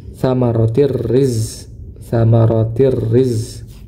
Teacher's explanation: idgham bila ghunah ini dimasukkan tanpa disertai dengan dengung tsamaratir riz tsamaratir riz jadi dimasukkan ee tanpa disertai dengan dengung rizqong nah huruf zai huruf zai ini dia memiliki sifat namanya sifat ee rakhawah.